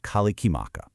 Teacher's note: So the English word has to be completely taken apart and rebuilt to fit those rules. The R sound turns into an L, those ses sounds get broken up into their own syllables with a vowel tacked on, and you do all that until, boom, you get the beautiful kalikimaka.